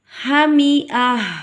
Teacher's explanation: وقف کی صورت میں تا کو ہم ہا ادا کریں گے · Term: وقف بالابدال